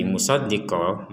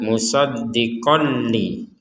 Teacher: Menjadi panjang dua harakat. Kalau digabungkan musoddiqolli panjangnya menjadi hilang atau tidak dibaca panjang